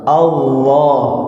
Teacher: Yang benar adalah itu makhrajnya lam Pak, ujung lidah ya, ujung lidah, tapi lamnya itu ditebalkan, artinya dia tidak disangkutkan, disentuhkan ke langit-langit, ngambang Pak ya